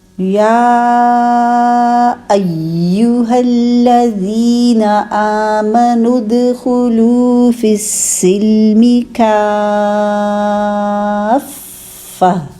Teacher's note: یہاں پہ دیکھیے ایک تو یا پہ مد بنی ہوئی ہے، مد بنا کے پھر آگے دیکھیے حمزہ کے بعد یا مشدد ہے، تو مشدد یا کو بہت اچھا مضبوطی جماؤ کے ساتھ ملانا ہے، ٹھیک ہے، اس کو ڈھیلا ڈھیلا نہیں ملانا۔